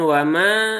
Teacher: wawnya tipis, mimnya juga tipis ya